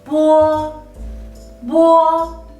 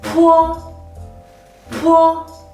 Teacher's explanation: The only difference between bo and po is aspirated and unaspirated. Po is not aspirated, so when we pronounce it, we should use less airflow.